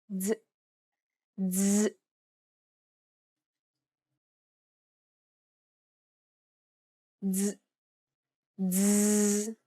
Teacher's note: It starts off as a D sound, but ends with a Z sound. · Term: DZ sound